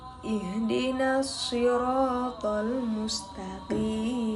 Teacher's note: Q makhrajnya pangkal lidah dan langit-langit. Sifatnya jar, syiddah, istilla, dan qalqalah.